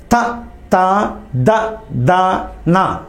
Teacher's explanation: నాలుక ఎక్కడికి వచ్చింది దంతాల మధ్యకు వచ్చింది కాబట్టి ఇవి దంతాల నుంచి పుడతాయి కాబట్టి దంత్యాలు అంటారు.